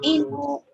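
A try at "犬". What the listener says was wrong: No, not inu, bukan. Inu. Inu ya, jangan dipanjangin, nggak ada matnya. Yang boleh dipanjangin tuh seperti ini.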